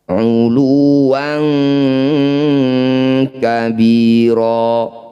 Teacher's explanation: Fathah tanwin bertemu kaf atau qaf disebut bacaan ikhfa, namanya ikhfa ab'ad. Bunyi fathah tanwinnya kita bunyikan dengungkan 2 harokat.